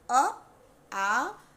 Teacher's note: अ, आ जीभ के मध्य स्वर से उच्चारित होता है